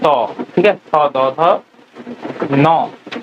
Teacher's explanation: তোমার জিহ্বা দাঁতের সাথে কানেক্টেড হয়ে তুমি এই উচ্চারণ গুলো করছো। ত, ঠিক আছে, থ দ ধ ন, এইগুলো সব দন্ত ধ্বনি, দন্ত মানে দাঁত।